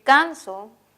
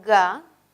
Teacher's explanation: los dos son oclusivos, los dos son velares, el primero es sordo y el segundo es sonoro.